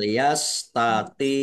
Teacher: dibaca agak berat ya jangan sama dengan ta